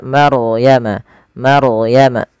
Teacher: bacaan ro tafkhim yang di mana rnya wajib kita bukan wajib rnya dibaca dengan tebal